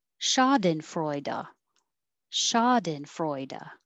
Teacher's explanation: freu is secondary stress so it gets a little longer but not higher